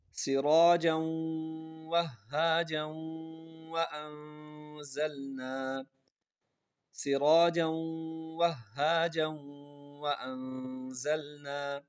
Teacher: جیم کے اوپر دو زبر ہیں، اس کو ہم نے واو کے ساتھ ملایا اور آگے واو کو ہا کے ساتھ سختی سے ملایا